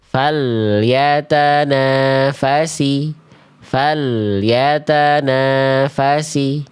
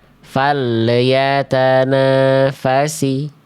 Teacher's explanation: Seharusnya falya tanpa adanya bunyi le di ujung pelafalan al.